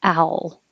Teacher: Owl. And I'm using a dark L, so the middle of my tongue is pressing up instead of the tip of the tongue.